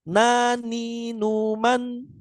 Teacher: Sedangkan nun ujung lidah bertemu dengan langit-langit ya. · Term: makhraj huruf nun